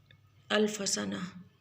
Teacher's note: وہ تا جو ہے وہ ہا کی آواز میں بدل جائے گی